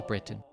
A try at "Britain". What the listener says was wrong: Why is he saying Britain like that? He's really pronouncing the fucking T as if it's two separate words, man. Britain. Britain. You don't pronounce the T.